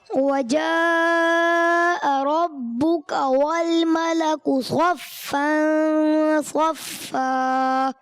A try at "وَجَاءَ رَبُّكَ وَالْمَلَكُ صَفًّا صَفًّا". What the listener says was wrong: ماشاء اللہ، مد کو اور تھوڑا کھینچ کر.